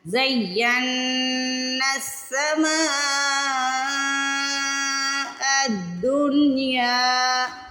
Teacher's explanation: مد کے بعد جب حمزہ آتا ہے تو اس کو 4 سیکنڈ کے لیے سٹریچ کرتے ہیں، کھینچ کے ادا کرتے ہیں۔ الدنیا، اس کو دنیا نہیں پڑھنا، بہت سے لوگ اس کو دنیا پڑھتے ہیں، دنیا نہیں پڑھنا اس کو۔